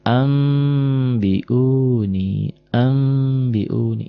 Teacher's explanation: n berubah jadi m annya jadi am tapi bindeng sedikit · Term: iqlab